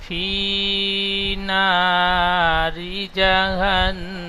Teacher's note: নুন তাসদিয়ালা অক্ষরকে এক আলিফ গুণনা করে পড়তে হয়